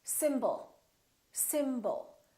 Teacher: we have two syllables the first syllable is stressed and the second syllable is reduced when we have a reduced vowel we don't pronounce it fully